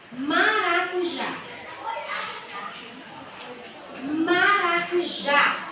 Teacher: o já é a sílaba mais forte a última é mais forte